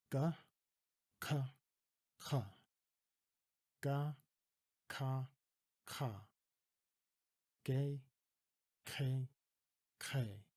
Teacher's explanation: the back of your tongue starting to catch on the roof of your mouth and vibrate